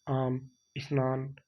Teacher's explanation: यहां म और न का उच्चारण स्वास के एक ही आघात में हो रहा है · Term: अक्षर